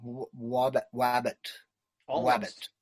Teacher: Almost a v, but the teeth don't touch the lower lip. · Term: labiodental approximant